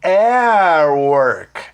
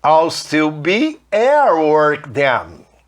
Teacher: Olha só, at não tem um T? Juntando com esse som de U do work, o T vai ficar com um som de R.